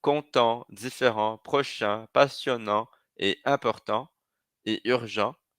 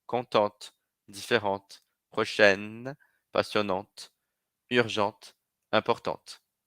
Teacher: a gente vai pronunciar sem a última consoante no masculino e pronuncio a consoante final no feminino